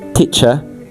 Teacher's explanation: But in the standard English spoken in the UK, the R is not pronounced. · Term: not rhotic